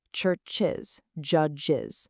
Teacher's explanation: they absolutely require the full is extra syllable to be pronounced correctly.